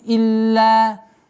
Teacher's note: Удвоение, а потом долгота в размере 2 огласовок. Илля. Фатха удлиняем.